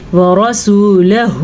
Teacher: را کو پر پڑھنا ہے، اور یہ جو مد آپ کو نظر آ رہی ہے یہ بھی آپ نے کھینچ کر کے پڑھنی ہے. اور یہ واو مدہ ہے.